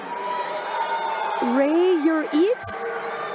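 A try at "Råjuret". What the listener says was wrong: Ro-Juret. Ro-Juret. The A with a little circle on top is pronounced O. Ro-Juret.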